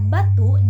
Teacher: Bunyi B pada kata batu dihasilkan dengan kedua bibir yang dirapatkan, kemudian dilepaskan sehingga udara keluar